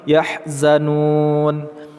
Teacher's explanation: Mad arid li sukun kita panjangkan dulu, nu 2 sampai dengan 6 harakat baru kita sukunkan huruf nun